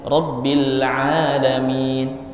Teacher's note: ainnya diganti hamzah, alam. Harusnya Rabbil Alamin, pakai ain.